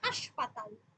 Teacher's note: এখানে কোনো নাসিক্য ব্যঞ্জন নেই, এটা উচ্চারিত হচ্ছে অনুনাসিক হয়ে হাসপাতাল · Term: শতনাসিক্যী ভবন